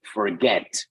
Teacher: that word forget the stress is on the second syllable